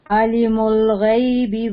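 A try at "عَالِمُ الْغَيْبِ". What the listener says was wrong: عالم الغیب نہیں ہے عین کے اوپر کھڑی زبر ہے، اس کو ہم لمبا کریں گے. عالم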